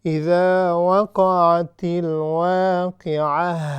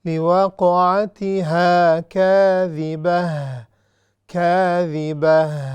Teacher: So this ta, because it's a round ta, it changes to ha at the time of stopping.